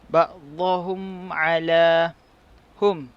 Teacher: mim mati berjumpa dengan ain, hukumnya adalah izhar syafawi dan cara bacaannya adalah dibaca tanpa dengung. Kemudian ala dibaca 2 harakat kerana mad asli.